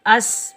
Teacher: सीन सीटी और सख्ती वाला हरफ है, तो सीन पर हम सीटी की आवाज़ निकालेंगे और बगैर खींचे पढ़ेंगे।